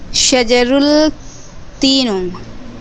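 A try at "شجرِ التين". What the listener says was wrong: نہ شجر التین، یاد رکھیے بعد والے پہ زیر آئے گا. شجر التین،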